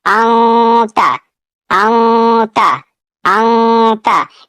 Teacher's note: اب اسے پڑھنا ہے اونتا، اونتا۔ अंता, यानी नून साकिन की आवाज को नाक में छुपा कर पढ़ना है। अब तनवीन के बाद भी हुरूफ इख्फा में से कोई हर्फ आएगा तो इख्फा होगा। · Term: اخفا